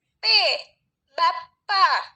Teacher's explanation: Fonem P, cara artikulasinya itu plosif atau letupan, dan tempat artikulasinya itu di bilabial, dua bibir.